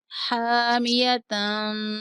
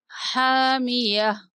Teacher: وقف کی صورت میں تا کو ہا سے بدل دیں گے